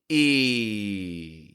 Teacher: Now focus on what your mouth position is in this sound. Your teeth are close together. The tip of your tongue is low down, kind of out of the way, and the back of your tongue is up and pressed against your top teeth. Focus on that position for a moment and say that sound back to me.